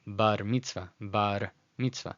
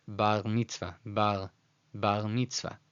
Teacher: In English pronunciation, it'd be bar mitzvah, bar. In Spanish, it sounds like bar mitzvah, bar mitzvah. But in Israeli, which is more of a French R, bar mitzvah, bar mitzvah.